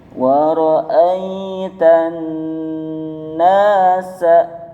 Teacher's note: Ada nun tasdid, masih ingat nun tasdid hukumnya gunnah, yaitu dibaca ditekan 3 harokat